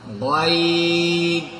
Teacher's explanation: غین پور پڑھے جانے والے حرف میں سے ہے اس لیے اس کو تھوڑا موٹا کر کے کہنا ہے، پور کر کے پڑھنا ہے غین.